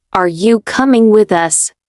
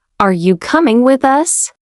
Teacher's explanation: I'll say it in a flat tone. Are you coming with us? Now I'll say it again, but this time with a rising intonation at the end, like a question.